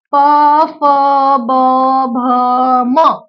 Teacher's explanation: यांचा उच्चार करण्यासाठी ओठांची हालचाल होते म्हणून याला काय म्हणणार आहे आपण याला औष्ठ वर्ण म्हणणार